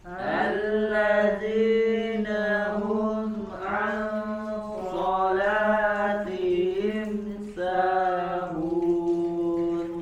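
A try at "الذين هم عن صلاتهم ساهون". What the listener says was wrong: Nah, ya alladzi huruf dzal lagi di sini ada huruf dzal ya, bukan allazina ya, bukan allazi tapi alladzina ya, tempelkan ujung lidah ke gigi seri bagian atas ujungnya. Alladzina hum. Nah, di sini ada huruf ha ya, dari pangkal tenggorokan ha hi hu hum. Alladzina hum di sini ada huruf ain, nun sukun kemudian bertemu dengan huruf ikhfa ya.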